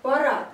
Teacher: это когда на конце слова у нас с вами звонкий звук превращается в глухой